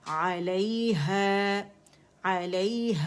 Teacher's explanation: علیہ علیہ آواز اوپر جائے گی, ہے نہیں پڑھیں گے, امالہ نہیں کریں گے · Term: یالین